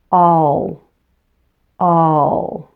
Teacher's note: The dark L is formed a little differently than the L at the beginning of a word. Now the dark L is made with the back of your tongue. · The front of your tongue really doesn't need to contact anything. It can just relax in the bottom of your mouth if you like.